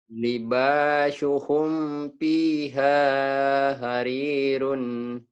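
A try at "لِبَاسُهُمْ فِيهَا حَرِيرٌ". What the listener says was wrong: Bagus, tapi sininya jangan shun, jangan digitu. Biasa aja. Libasuhum, esnya biasa ya. Pinya panjang. Piha. Libasuhum fiha harirun.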